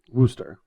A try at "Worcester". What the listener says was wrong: And it's not too long of an O. Not oo. Worcester. The ending R you leave off if you're from the area, but if you're not from the area, then you actually know